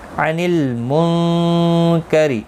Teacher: نون ساکن کے بعد حروف اخفا کا کاف آیا، اخفا حقیقی ہوگا، گنہ کے ساتھ پڑھیں گے